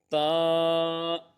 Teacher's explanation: यह जबान की नौक और ऊपर के दांतों की जड़ से अदा होता है